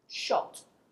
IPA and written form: ʆɒt (shot)